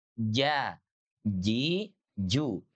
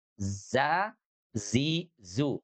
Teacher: Yang satu di tengah lidah, yang satu di ujung lidah. Yang satu di langit-langit, yang satu ada di gusi bawah.